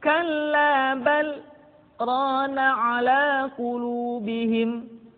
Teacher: Kalimat bal berhenti sejenak, tahan nafasnya selama 2 harokat, kemudian dilanjutkan kembali.